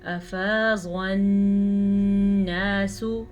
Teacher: نون پہ غنہ کریں اور سین کو لمبا نہیں کرنا